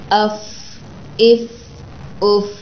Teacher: تو سامنے والے 2 دانت نیچے والے ہونٹوں کے تری والے حصے سے